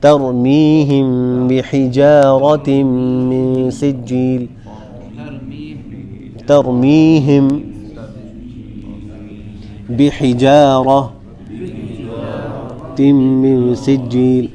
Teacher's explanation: اور ایسے ہی ترمیہم میں آپ دیکھیں کہ سوائے را کے باقی سارے حروف باریک پڑے جا رہے ہیں